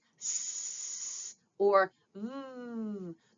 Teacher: sounds that have more airflow like s or vv those are called fricatives